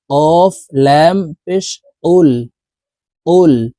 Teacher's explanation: লামের সাথে উচ্চারণ করতে হবে এভাবে পড়বো কফ লাম পেশ কুল কফের উচ্চারণ জিহ্বার গোড়ায় তার বরাবর উপরের তালুর সঙ্গে লাগাইয়া উচ্চারণ করতে হবে